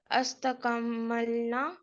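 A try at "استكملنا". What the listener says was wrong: इस्तकमलना, जेर है उसके ऊपर।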